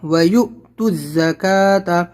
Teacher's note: یا حمزہ پیش یو، جھٹکا لگے گا